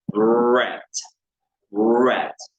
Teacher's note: La R en inglés es gutural, por supuesto es el sonido que sale desde la garganta